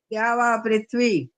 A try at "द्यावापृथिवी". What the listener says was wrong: अभी भी यही कर रहे हो, पृथ्वी बोले रहे हो ना, था आधा बोलते जा रहे हो बल्कि अभी भी, इसीलिए तो स्पेलिंग गलत है, अभी भी गलत है। अब द्यावा पृथ्वी, थी है, थी की आवाज आनी चाहिए, थी। जब बोल रहे हो थ में छोटी की मात्रा है तो बोलते तो नहीं हो वो।